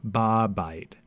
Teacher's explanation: the vowel of the article gets swallowed up by the prefix preposition